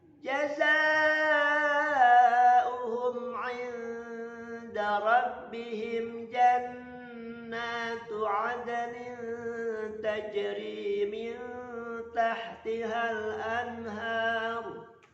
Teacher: nun sukun menghadapi huruf dal, maka disamarkan dan tahannya dengungkan 2 harokat. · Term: ikhfa